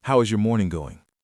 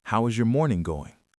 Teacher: >> Imagine if I walked up to you and said, "How is your morning going?" With my voice going very high at the end, it feels aggressive, almost like I suspect you are having a bad morning. In casual office small talk, your pitch needs to gently drop at the end of the sentence. It should sound relaxed, like a soft sigh. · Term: falling intonation